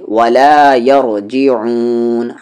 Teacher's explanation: عین بیچ والے حلق سے لاسٹ میں مد عارض